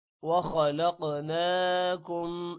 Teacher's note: خو موٹا ہوگا، قوف بھی موٹا ہوگا، قوف پر قلقلہ بھی ہوگا